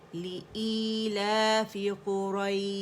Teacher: لِإِيلَافِ لی حمزہ اقص الحلق سے ادا ہوگا